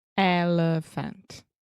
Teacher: the elephant, the middle sound, that's the schwa